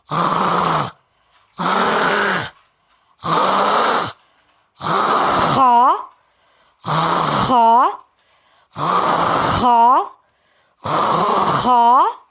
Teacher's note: اس خراش کو ہم نے کھینچنا ہے، لمبا کر کے تھوڑا سا اس کو ادا کریں گے تاکہ ہمارا پرفیکٹلی خا ادا ہو جائے۔ اگر ہم تھوڑا سا بھی ایسے کریں گے تو بھی ادا ہو جائے گا، لیکن ہم نے یہ کرنا ہے کہ ہم تھوڑا سا لمبا رکھیں تاکہ ہماری خا کی خراش اور ہمارا مخرج 100% پرفیکٹ ادا ہو۔